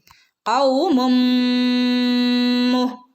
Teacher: നാവിന്റെ മുരട് ഭാഗത്തുനിന്ന് വരുന്ന ലെറ്ററാണ് ക